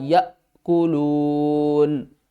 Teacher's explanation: لیکن جب حمزہ کی باری آتی ہے تو اس کو ہم نے جھٹکے کے ساتھ پڑھنا ہوتا ہے